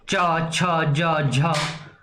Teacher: वायु स्पर्श करके जो है घर्षण के साथ बाहर निकल रही है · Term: स्पर्श संघर्षी व्यंजन